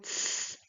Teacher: we have just the tip of the tongue touching the back of the teeth, the upper back of the teeth